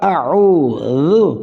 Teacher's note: عین وسط حلق، واو مدہ · ذال زبان کی نوک اوپر والے دانتوں کی نوک سے